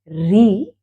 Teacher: जीभ ऊपर टच करेगी मुड़ते हुए